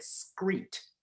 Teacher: when he got to the word street he said screet s-k-r-e instead of s-t-r-e